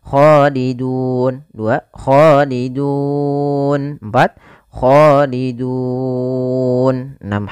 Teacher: Boleh 2 harokat, boleh 4 harokat, dan boleh pula 6 harokat. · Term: mad arid disukun